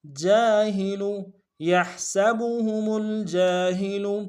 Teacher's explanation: جیم کے ساتھ الف مدہ ہے، ایک الف مقدار میں کھینچیں گے جیم کو ، ہا کو نرم سے ادا کریں گے، لام کو نرم